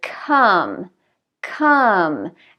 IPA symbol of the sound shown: ʌ